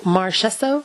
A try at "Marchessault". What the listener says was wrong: Chess. Not chess, like the game.